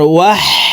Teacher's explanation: হা হরফকে হলুকের মধ্যখান থেকে উচ্চারণ করতে হবে